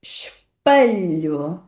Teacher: E a letra E também não vai ser pronunciada aqui como é ou como e, pelo contrário, ela vai desaparecer. · Além disso, na segunda sílaba da palavra, na sílaba pa, nós temos a letra e associada na variedade padrão do português europeu ao som a, o mesmo som fechado que está associado à letra A.